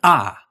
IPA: a